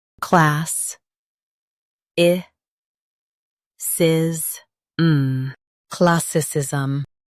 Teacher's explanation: Emphasize class and keep i soft.